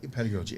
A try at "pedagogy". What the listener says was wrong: You said piggogy. There are no pigs in that goji.